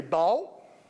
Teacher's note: you can also say baal which is a traditional southern pronunciation